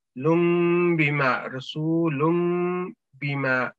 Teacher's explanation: تو یہ میم اس چیز کو ظاہر کر رہا ہے کہ یہاں پہ اقلاب کا رول ہے, آپ نے یہاں پہ میم کی آواز کے ساتھ ہلکا غنہ کرنا ہے نون کی بجائے